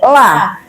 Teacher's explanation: La ujung lidah naik ke langit-langit.